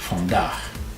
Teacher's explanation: pronounce your V like an F